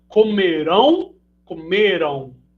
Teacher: Se você realizar aí na sua casa agora, ó, comerão, comeram, você faz o arredondamento dos lábios, né, depois do A ali, representando que tem um ditongo no final, na última sílaba dessas palavras. Entretanto, a primeira é oxítona, comerão, e a segunda é paroxítona, comeram.